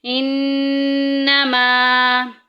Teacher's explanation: ایک الف کے برابر غنہ کرنا ہے، ناک میں آواز لے کے جانی ہے